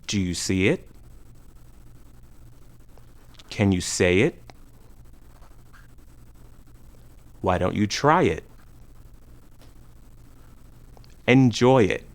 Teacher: The linking sound depends on the vowel at the end of the first word. We add a short linking Y sound when the first word ends with the vowel E, see it, A, say it, I, try it, or oi, enjoy it. Do you see it?